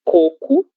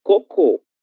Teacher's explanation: A única diferença além da escrita é a pronúncia coco. Coco, sílaba tônica, a primeira, cocô, sílaba tônica, última.